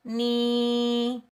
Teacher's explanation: ये या मद्दा है इसको हम एक अलिफ की मिक दार खेंच कर अदा करेंगे